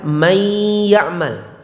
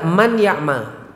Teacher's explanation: Nun dimasukkan ke ya. Namanya idgham. Man ya'mal jadi may ya'mal.